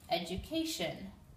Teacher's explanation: this D makes like a sh sound